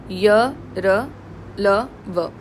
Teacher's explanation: And then फिर अल्पशक्ति के साथ निकालते हो। यहां पर कोई हवा रुक करके और झटके के साथ नहीं निकल रही। आराम से कम एयर के साथ यह बोले जा सकते हैं। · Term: अंतस्थ व्यंजन